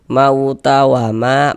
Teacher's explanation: Nah, nih alif sebelum alif ada ini ada harakat fathah. Maka huruf yang memiliki harakat fathah dibaca panjang. Sehingga ma dibaca panjang. Mad thobbi'i panjang dua harakat.